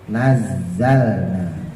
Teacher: sama kayak sin makrajnya ya nazzalna jangan sampai naik ke atas kalau ujung lidahnya naik ke atas Nanti jadi Jim